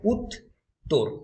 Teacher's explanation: এই যে যুগ্ম ধ্বনিটা রয়েছে তয়ে তয়ে, এটা কিন্তু দুটো দলে ভাগ হয়ে যাচ্ছে, দুটো সিলেবলে ভাগ হয়ে যাচ্ছে। একটা উত, এদিকে একটা রয়ে যাচ্ছে, তো ওদিকে একটা চলে যাচ্ছে। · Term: গুচ্ছধ্বনি